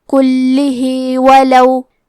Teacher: کلمت کلہ میں لام پہ تشدید ہے تو ہم 2 حرف کے برابر لام کو پڑھیں گے، ہا کے نیچے کھڑی زیر ہے تو مد صلہ صغرا کو ظاہر کریں گے، کلہ ولو۔